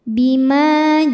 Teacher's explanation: ada Alif didahului fathah maka mimnya panjang dua harakat